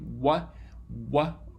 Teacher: a combination of uh lip and velar articulation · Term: labial velar sound